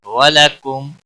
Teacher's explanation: میم ساکن کے بعد واو آیا ہے اظہار ہوگا، غنہ نہیں کریں گے